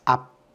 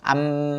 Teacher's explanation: 앞 하는 순간은 닫히면서 소리가 더 안 나지만 암은 암 하고 계속 소리가 날 수 있지.